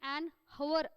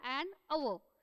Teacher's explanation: Then next comes the most important part, an hour. Now though the word is having h at the beginning, still when we are pronouncing this word we do not pronounce the letter h